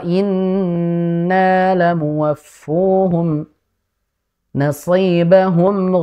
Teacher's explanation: Jadi nun sukun ketemu qof diikhfakan dengan ikhfa yang tebal karena ketemu huruf tebal.